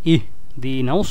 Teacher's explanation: হামজাটা শক্ত করে হা স্পষ্ট করবেন।